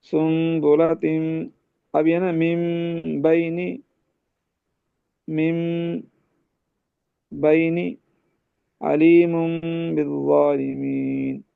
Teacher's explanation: نون ساکن اور تنوین کو میم سے بدل غنہ کرتے ہیں، میم سے بدل دیتے ہیں، غنہ کرتے ہیں